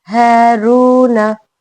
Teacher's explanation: हा हलक के निचले हिस्से से निकालनी है